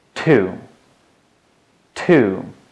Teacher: Your tongue touches right behind your top teeth when you say to.